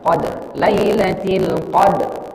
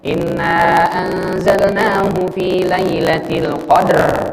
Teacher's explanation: bunyi R-nya itu minimal terdengar oleh telinga kita. Nggak boleh berlebihan juga.